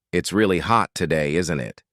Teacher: To ask for agreement, when we think we know the answer, we say these tags with a falling intonation.